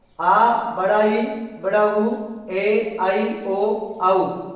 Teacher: दीर्घ स्वर वर्ण वे वर्ण होते हैं जिनका उच्चारण करते समय अपेक्षाकृत यानी जो लघु स्वर हैं उनकी तुलना में 2 गुना समय लगता है, यानी 2 मात्राओं का समय लगता है। इस कारण इसको द्विमात्रिक स्वर के नाम से भी जानते हैं।